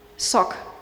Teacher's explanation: So Greek does not have this sh, it just has s